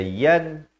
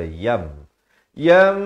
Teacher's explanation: Kita tukarkan daripada bunyi nun kepada bunyi mim.